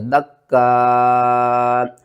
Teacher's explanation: دال کاف زبر دک، کاف الف مد زبر کا، دک کا، حمزہ زبر ا، دکا۔ اور وقف کی صورت میں حمزہ کو جب ساکن کریں گے تو جھٹکے کے ساتھ پڑھیں گے